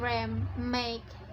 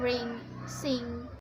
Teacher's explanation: the oral passage is closed, which have no oral airflow at all, and the air flows continues through the nose instead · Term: Nasal